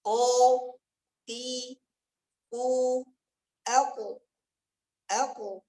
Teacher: Perhatikan dia di pangkal lidah dengan anak tekak. Ko yang perlu dijaga tebalnya. · Ko yang perlu dijaga tebalnya. Dan qalqalah di qaf itu ketika sukun, dia mengikuti ketebalan qaf. Nada qalqalah tipis, tebal dia.